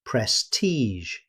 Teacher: The ending isn't a hard g sound, instead native speakers say prestige, finishing with the same sound you hear in measure.